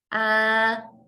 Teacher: my tongue is relaxed at the bottom of my mouth extending forward to my bottom teeth ah okay I should feel a vibration almost from my nose